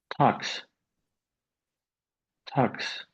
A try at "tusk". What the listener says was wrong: Um, what I'm hearing, what I'm hearing you say, it's more like tux.